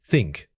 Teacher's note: For think, your tongue needs to gently press between your teeth, creating a soft friction as you push the air out. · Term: dental fricative